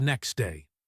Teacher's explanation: We almost never say next day. The T is trapped between the X and the D. So we delete it. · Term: ghost sounds